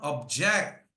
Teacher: I'm putting more pressure on the second syllable.